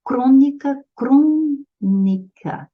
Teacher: Olha só, é a antepenúltima sílaba que é tônica. A antepenúltima, a palavra é proparoxítona, essa tem que ser a segunda.